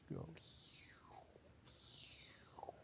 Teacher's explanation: the switch from E to U involves your tongue going from being front to being back, and also your lips going from being not rounded to being rounded